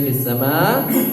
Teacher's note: fis sama ma-nya bacanya 4 ketukan